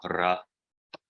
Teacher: kind of roll your R's, so ra, but it makes that kind of ra sound as you have an R in Spanish, not like the English R, but rolled a little bit.